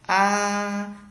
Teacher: Thanh thứ nhất là viết ngang ra giống như không có dấu gì trong tiếng Việt. Bạn đọc là A, tức là bạn kéo dài hơn so với âm tiếng Việt